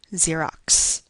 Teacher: the last X in the word Xerox really represents a sequence of two sounds C and S